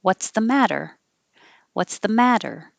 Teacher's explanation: the t's change to d's